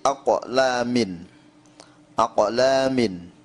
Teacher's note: qalqalah sughrahnya adalah qalqalah pantulannya sedikit